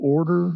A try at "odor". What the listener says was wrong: Odor. You said order. It's like he's not a short order cook.